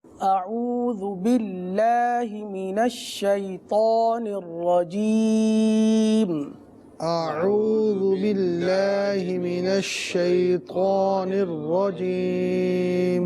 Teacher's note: شیطان اس کلمے میں طا ہے، لہٰذا اس کو پر ادا کیا جائے گا، تو اس کا خاص خیال رکھتے ہوئے پڑھیں۔